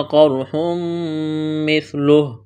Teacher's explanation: را ساکن سے پہلے زبر ہے، را کو موٹا کریں گے